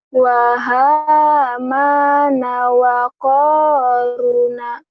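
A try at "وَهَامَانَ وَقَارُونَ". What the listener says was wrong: Ruhnya panjang.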